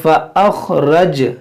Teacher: اس را کو موٹا پڑھیں گے، جیم میں قلقلہ ہوگا، نون پر کھڑا زبر ہے، اس کو کھینچیں گے 1 الف کے برابر۔